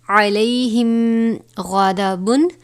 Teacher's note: میم ساکن کے بعد حرف غین آیا ہے لہٰذا یہاں پر اظہار شفوی یعنی غنہ نہیں کریں گے